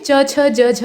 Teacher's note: और स्पर्श संघर्षी में च छ ज झ आते हैं। संघर्ष होता है लेकिन स्पर्श पूरा नहीं होता है, हो होकर हट जाता है।